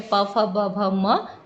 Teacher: पवर्ग जो है वो पूरा ओष्ठ से उच्चारित होता है। पवर्ग में प, फ, ब, भ, म, ये 5 वर्ण हैं।